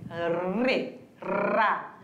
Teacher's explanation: O R, ele sempre vai ser vibrante. Sempre vai ser vibrante.